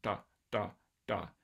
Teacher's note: instead of making like an approximate R, you make a complete stop like da, da, da. So it should sound sort of like, or these stops should sound sort of like a combination of T and R or D and R, depending on whether or not you're voicing them. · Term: retroflex stops